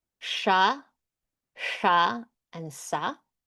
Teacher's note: sha in the second mouth position, sha in the third mouth position, and sa in the dental position. So these are our three sibilent vargas.